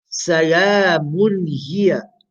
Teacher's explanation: the ha is a letter of the throat, pronounced from the aqsa halq, from the bottom of the throat.